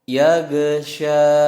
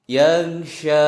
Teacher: itu huruf go bukan huruf qalqalah, jadi tidak memantul